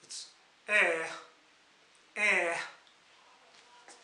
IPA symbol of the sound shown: ɛ